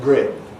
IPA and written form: grɪn (grin)